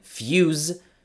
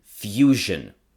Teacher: The z in fuse, which is more of a Z sound, changes to zh in fusion.